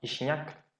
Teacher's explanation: Entre dos I se palataliza solamente la J.